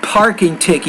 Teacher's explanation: Now when you say not barking ticket, but parking ticket, you need to pronounce that P with more air